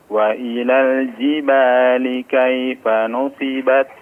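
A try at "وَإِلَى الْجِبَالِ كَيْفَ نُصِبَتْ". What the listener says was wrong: Shadnya diperjelas, afwan.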